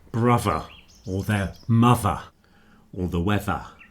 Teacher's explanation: the voiced one at the front of a word often sounds like a D and in the middle sounds like a V